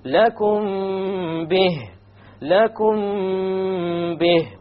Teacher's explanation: We have a meme sakin followed by a ba. Once again, we're going to have an ikhfa, and there will be a ghunna.